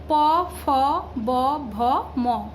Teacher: নিচের ঠোঁট দিয়ে ওপরের ঠোঁটে শ্বাসবায়ু নির্গমনে ব্যাঘাত ঘটালে ওষ্ঠ ব্যঞ্জন ধ্বনি উচ্চারিত হয়